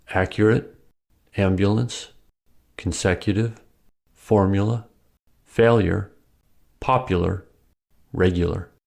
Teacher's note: When U is unstressed it may sound like yah